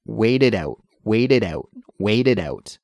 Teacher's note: It's not a harsh T sound. It's more of a softer, almost between a T and a D sound · that final T sound in wait is actually transferred more to a D sound when we say it quickly